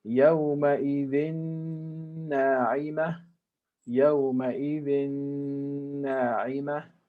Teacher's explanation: And finally, the example with noon, tanween followed by noon, we make connection or idgham. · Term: idgham with ghunna